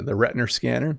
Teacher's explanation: The way you added the little R sound in the retina scanner in your eye is quite common in some British accents. It's called the intrusive R.